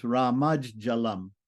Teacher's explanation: So the T is going to become a J. The dental T becomes a palatal J in front of palatal J.